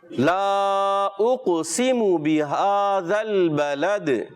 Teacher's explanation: मीम की पेश प्यारे बच्चे लंबी नहीं करनी.